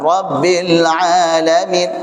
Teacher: rabbil tipis. Jangan masuk hidung, jangan juga jadi tebal.